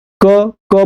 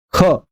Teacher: क बोलेंगे तो आपको देखेंगे कि हाथों पे हवा ज्यादा नहीं पहुंचे, लेकिन जैसे ही ख बोलेंगे, ख, तो देखिए हाथों पर हवा ज्यादा जाती है, प्राणवायु ज्यादा जाती है। · जब आप ख बोलेंगे तो देखेंगे कि प्राणवायु ज्यादा निकलती है, आपके इस हाथों को महसूस होगा कि हवा ज्यादा निकल रही है। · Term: महाप्राण